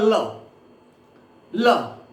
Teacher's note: और जब आप ल को बोलते हैं, तो जब आप ल को बोलते हैं तो ध्यान रखिएगा, जीभ का आगे का हिस्सा ऊपर दंत मूल को स्पर्श करता है, मूर्धा को स्पर्श करता है ल। जब वायु निकलती है तो जीभ की बगल से निकल जाती है, जीभ की आसपास से निकल जाती है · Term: पार्श्विक वर्ण